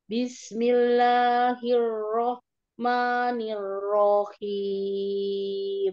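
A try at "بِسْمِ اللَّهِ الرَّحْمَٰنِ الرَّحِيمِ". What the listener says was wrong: Ahsan, hi-nya sudah bagus.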